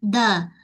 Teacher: hujung lidah dal arab menyentuh pada belakang pangkal gigi atas